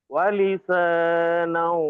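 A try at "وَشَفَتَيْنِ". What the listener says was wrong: টান হয়ে গেল। ওয়াশাফাতাইন।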